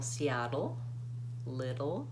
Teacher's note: That T sounds a little bit more like a D, Seattle, not Seattle, little.